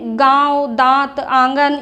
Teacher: वे स्वर जिनका उच्चारण नाक और मुख दोनों से होता है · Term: अनुनासिक